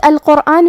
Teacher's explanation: قاف کی ادائیگی زبان کے جڑ اور تالو کے نرم حصے سے ہے. قاف حروف التفخیم میں سے بھی ہے تو ہم قاف کو بھاری آواز میں ادا کریں گے. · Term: حرف القاف